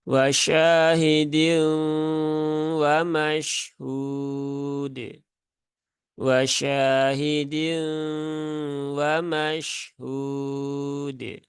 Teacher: di huruf dalnya, kolkolahnya jangan berlebihan